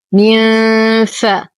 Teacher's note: نون ساكنة بعد حرف الفاء الحكم إخفاء حقيقي مع غنة كاملة مرققة